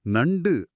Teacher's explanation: நாவின் நுனி உங்க மேல்வாய் பல்லின் அடிப்பகுதியை தொடுவதால் இந்த நகரம் பிறக்குது.